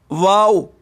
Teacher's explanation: واو یہ دونوں ہونٹوں کو گول کر کے ادا ہوتا ہے، یعنی منہ کے خالی حصے سے۔